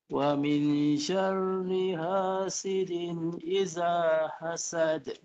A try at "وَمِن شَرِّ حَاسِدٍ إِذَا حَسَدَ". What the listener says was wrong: Rohnya tebal ni tuan. Nipiskan lagi. Wa min syarr. Nipis getarannya. Dan bari bawah pun nipis.